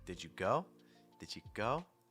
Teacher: the stress is on the base verb or whatever goes after the did you part. So go in our examples, that means that it needs to have the highest pitch